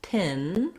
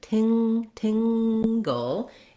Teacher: It still has that lax I vowel and our T sound, but now the NG, those two letters work together to make the sound. So unlike in tin, where I have an N, my tongue is lifting in the front, in tingle, it's more like the words sing or ring or having.